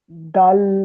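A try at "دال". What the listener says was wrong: এরকম টানবেন না দাল বলবেন না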